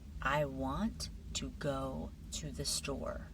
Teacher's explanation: Notice how the words want and go and store naturally stand out. The little words, they become quieter. That's part of the the rhythm of English.